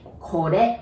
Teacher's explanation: we don't have R sound in Japanese, so you pronounce it like L